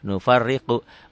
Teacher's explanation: Nufar, ro-nya double, ro-nya tarkik tipis.